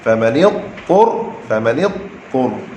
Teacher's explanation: huruf dha lidah duduk tepi, kemudian huruf ta lidah duduk tengah. Apabila kita kata famanil lidah duduk tepi, kemudian ejah balik lidah tu daripada tepi ke tengah pula.